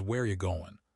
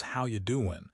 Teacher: We reduce the auxiliary verbs are do to almost nothing. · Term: reduction